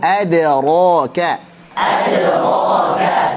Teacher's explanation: Jadi ada tipiskan dalnya, baru ro tebal, ka tipis.